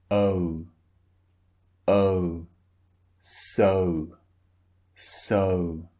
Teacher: shape of the mouth changes when you utter the sound so first the mouth is relaxed and then it's rounded